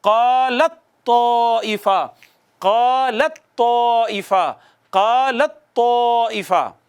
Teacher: اب لام کو ڈائریکٹ تا سے پڑھیں گے · کیوں؟ تا تو تا میں ضم ہو گئی ہے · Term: ادغام متجانسین